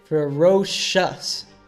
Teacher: the C sound becomes an SH sound